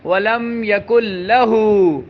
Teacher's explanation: لیکن لہو کا جو لام ہے اس کو لمبا نہیں کرنا۔